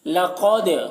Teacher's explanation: क़ाफ को मोटा करके पढ़ेंगे और दाल में कलकला करेंगे।